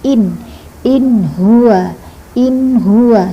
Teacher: pendek saja pendek tidak didengungkan, tidak dipanjangkan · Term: nun sukunnya